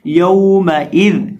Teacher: یا زبر واو یو، میم زبر ما، یوم، حمزہ زیر ای، یوم ای، دال دو زیر دن، یوم ایذن یومئذ. یہاں ہم کسی بھی حرف کو کھینچیں گے نہیں اور دال کو نرمی کے ساتھ پڑھیں گے اور وقف کریں گے یومئذ.